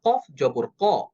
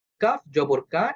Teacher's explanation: কফ জবর ক অ সাউন্ডে হবে কাফ জবর কা এটা আবার আ সাউন্ডে হবে অনেকেই কাফ এবং কফ দুইটার উচ্চারণ একই রকম করে রাখেন এটা ভুল দুইটাই যেমন অ সাউন্ডে হবে না ঠিক তেমনিভাবে দুইটাই আ সাউন্ডে বলা যাবে না।